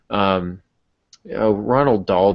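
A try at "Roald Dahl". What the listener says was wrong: There's no N. It's rolled.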